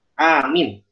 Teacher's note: Alifnya panjang, mimnya pendek. Mimnya malah nggak panjang.